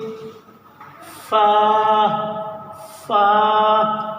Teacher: दोनों होठों के पास से निकलेगा